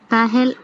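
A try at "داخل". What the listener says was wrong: দাখিল। দাখিল না দাখিল। দাখিল, খা খা, দাখিল। দাখিল পরীক্ষা বলে না, দাখিল দাখিল। দাখিলের খ।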